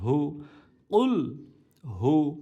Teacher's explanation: হা কণ্ঠনালীর শুরু থেকে মোটা গলা উচ্চারিত হবে